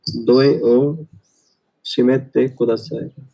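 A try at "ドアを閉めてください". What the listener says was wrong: Firstly ये दोए नहीं है, ये दोआ है. दोआ ओ शिमेते कुदासाई.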